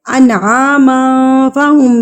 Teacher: تنوین کے بعد اگر حروف اقفا میں سے کوئی حرف آ جائے تو ہم تنوین کے آواز پر اقفا کریں گے، یعنی کہ اس کو چھپا لیں گے ناک میں